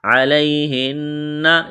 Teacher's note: یا لین ہے، بغیر کھینچ کے پڑھنا ہے، نون مشدد ہے، آواز ناک میں چھپائیں گے